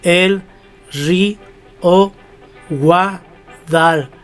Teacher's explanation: la palabra Guadalquivir es una palabra aguda, porque la sílaba tónica está en vir